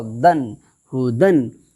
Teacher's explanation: دو زبر کی تنوین کی آواز نون ساکن کی طرح یکساں ہوتی ہے